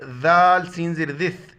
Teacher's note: ذال کے وقت زبان باہر نکالیں گے. ذال سین زیر ذث، سین کے وقت سیٹی کی طرح.